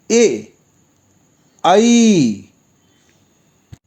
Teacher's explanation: अब कुछ ऐसे वर्ण भी हैं जिसका उच्चारण स्थान कंठ और तालु एक साथ हैं